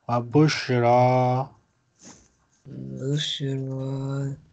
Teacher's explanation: it had fatha so elongate it two times